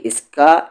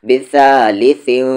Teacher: تنوین کی آواز کو میں چھپا کیوں رہا ہوں، کس کے؟ کیونکہ اس کے بعد جو لیٹر ہے وہ فا ہے، اور فا حروف اخفا ہے۔